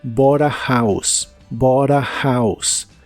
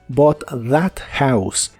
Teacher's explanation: En inglés americano es muy común que si una palabra termina con el sonido de la T y la que sigue empieza con un sonido vocal, esa T se pronuncia como R.